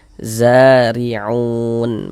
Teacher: Huruf ro memiliki tanda baca kasrah nih atau harakat kasrah. Maka huruf ro dibaca tarkik, dibaca tipis. · ditipiskan huruf rnya sehingga pangkal lisan kita tidak naik terangkat ke atas